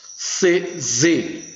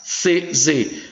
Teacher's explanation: Alveolares, C, Z. Veja que a língua pega nesses dentes laterais. C, Z. Aqui é o Sa, Se, Si, Só, Su, que pode ser representado pelo C, pelo S ou pelo C cedilha.